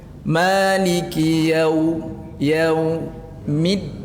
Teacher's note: Jadi yaunya ringankan, midnya tekankan. Jangan ditekan sadonya.